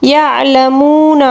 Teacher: یعلمون، یہاں پر واو مدہ ہے، واو مدہ کو بھی ہم ایک الف کے برابر کھینچ کر پڑھیں گے